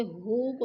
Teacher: انہ کی نون مشدد ہے، غنہ کریں گے.